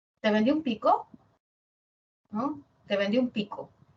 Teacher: el tono aparece pero delimitando frases no delimitando palabras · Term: entonación